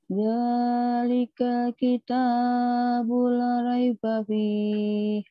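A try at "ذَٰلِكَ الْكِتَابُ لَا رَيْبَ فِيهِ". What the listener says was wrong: Jangan buru-buru. Dzalikal kitabul la raiba fih. Lahnya kan panjang. Ya, jangan buru-buru. Dinikmati.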